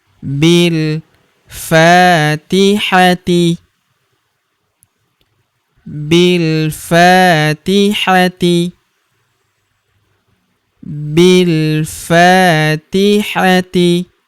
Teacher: huruf fa kita panjangkan dua harakat karena terdapat tanda alif di depannya yang ini.